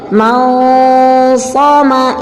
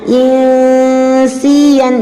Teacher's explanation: Di sini shad adalah dibaca secara tebal, kemudian sin dibaca secara tipis.